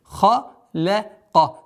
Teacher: Лям мягкая. Ха и каф твердые.